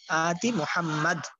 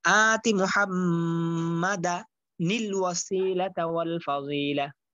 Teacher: অর্থাৎ মিলাই পড়লে নুনে কুতনিটা পড়তে হবে।